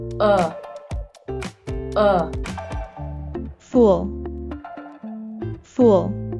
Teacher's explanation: that the double O in fool is an uh sound which we pronounce by raising the back of our tongue while rounding our lips and moving them forward a little